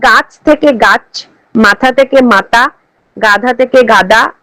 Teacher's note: পদান্ত ব্যঞ্জনের মহাপ্রাণতা লোপ পায়, অর্থাৎ বর্গের দ্বিতীয় ও চতুর্থ বর্ণ যথাক্রমে বর্গের প্রথম ও তৃতীয় বর্ণে পরিণত হয়।